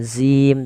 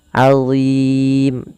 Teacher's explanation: Azim, Allah tidak dibaca dengan zim tapi azim, tebal huruf dha-nya, pangkal lidah kita terangkat. Allah, ujung lidahnya sebagaimana zal, azim.